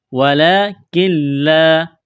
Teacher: نون ساکن کے بعد لام ہے، لام کے اوپر تشدید ہے، تو اس نون کو نہیں پڑھیں گے، نون کا لام میں ادغام کریں گے